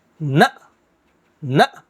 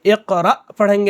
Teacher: جزم والے حمزے کو ہم کیا کرتے؟ جھٹکے کے ساتھ پڑھتے